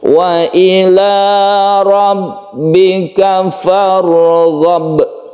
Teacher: Farghab ini juga pendek, roknya ditebalkan karena dia itu sebelumnya fathah, jadi merupakan tafkhim